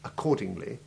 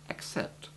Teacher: either the simple hard C sound of accordingly, which we'll call hard double C, Or the KS sound of accept, which we'll call soft double C.